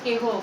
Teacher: হ কিংবা আকারবিহীন যুক্ত ধ্বনির পরে থাকলে এ ধ্বনির উচ্চারণ সংবৃত হয়।